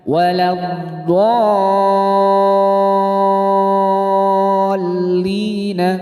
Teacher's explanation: Mad lazim mutsaqqal kalimi ialah mad bertemu tasjid dalam satu kalimat. Panjangnya tiga alif atau enam harakat.